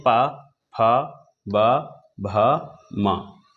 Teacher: ये ऐसे वर्ण हैं जिनका उच्चारण स्थान ओंठ है, यानी इनको बिना ओंठ मिलाए हम नहीं बोल सकते हैं। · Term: ओष्ठ